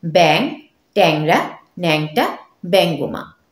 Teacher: অনুস্বার উঁয় গয় থাকলে এবং এরপর ইকার বা উকার না থাকে আদি এ বদলে কিন্তু অ্যা হয়ে যায়